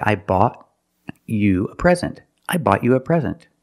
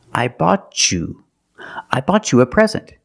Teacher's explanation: when I have t before the Y I can make the CH sound